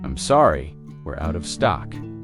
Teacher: Stress out of stock to make it clear.